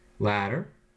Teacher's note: There the T is replaced by the flap, the upside down J, ladder, because it's intervocalic, that is between two vowels, where the first vowel is stressed.